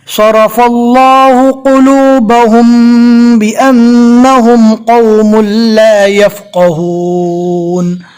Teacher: رو کو پور پڑھیں گے اس لیے کہ رو کے اوپر زبر ہے